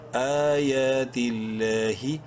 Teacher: لفظ اللہ سے پہلے زیر ہے تا کے نیچے. لام کو بولڈ نہیں کرنا، لمبا ضرور کریں گے کھڑی زبر کی وجہ سے. لام کھڑی زبر لا حاضر ہی.